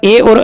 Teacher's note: ए और ऐ का उच्चारण स्थान कंठ तालु